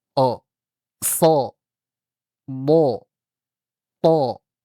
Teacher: kalau huruf-huruf yang tebal maka dia seperti kalau dalam fathah itu dia seperti mengucapkan huruf O tanpa monyong